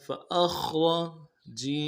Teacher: فأخ میں خا کو موٹا ادا کرنا ہے، اخ آواز جاری رہے گی. فأخ، را کو موٹا کرنا ہے. فأخرج، جیم زبر جا.